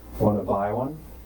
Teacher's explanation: the words want and to flow into each other. So the T sound at the end of want and at the beginning of to are silent. So all we hear is wanna. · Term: connected speech